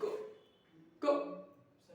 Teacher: अल्पप्राण वे व्यंजन होते हैं जिनके उच्चारण से बहुत ही कम, मतलब अल्प श्वास, अल्प वायु बाहर निकलती है